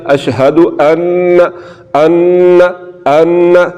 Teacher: یہ ہے کہ اگر نون پر شد آ جائے تو پھر نون مشدد کو ہم نے غنہ کر کے پڑھنا ہے، یعنی کہ اس میں غنہ ہوگا، آواز کو ہم نے ناک میں لے کر جانا ہے